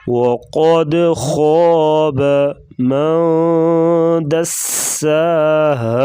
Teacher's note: قد قلقلہ کریں گے اور خا کو پر پڑھیں گے